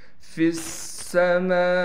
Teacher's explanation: میم کے بعد حروف مدہ ہے، حروف مدہ پر مد ہے، لہٰذا میم کو 5 الف کی مقدار کھینچیں گے